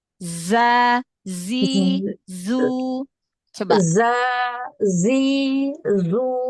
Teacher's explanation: safir itu kan suara yang tajam desisan Yang tajam